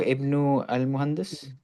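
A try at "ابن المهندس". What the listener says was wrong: Connected. Ibnul Muhandisi.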